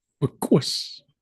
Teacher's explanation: So this regular rounded K becomes an ejective rounded K.